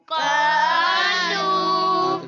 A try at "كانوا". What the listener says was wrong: तो कौफ मोटा क्यों पढ़ दिया कानू